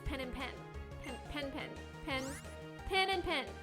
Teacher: I have what's called a pin-pen merger because I say them the same.